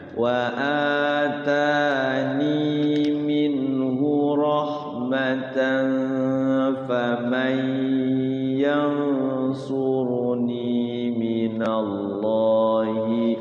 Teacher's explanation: ada Idam biguna juga tuh nun sukun ketemu ya ditahan karena bigunna